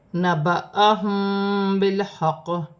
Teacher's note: میم ساکن میں اخفا ہوگا. میم ساکن کے بعد با آ رہی ہے تو اخفا مال غنہ کا قاعدہ ہے